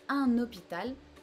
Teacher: H is super easy in French because it's just absent. You do not pronounce it at all. It's silent. In English, you will aspire, or you will like use a lot of breath here to pronounce this letter.